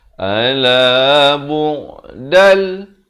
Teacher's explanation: Di sini idgham bila gunnah. Daripada bu'dan jadi dal. Masuk tanpa dengung.